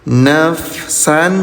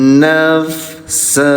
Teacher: Ingat, kalau berhentinya di garis 2 atau di fathatain, bunyi tanwinnya dirubah jadi panjang 2 harokat. Nafsan jadi nafsa.